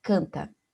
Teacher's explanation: eu tenho cinco letras c a n t a só que esse n da palavra canta Ele não tem som Ele simplesmente serve para nasalizar o ar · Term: dígrafo vocálico